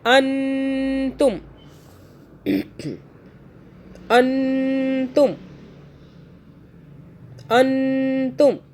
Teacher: अन तुम मतलब मुंह में रखेंगे, गुन्ना करेंगे नाक में 2 सेकंड का।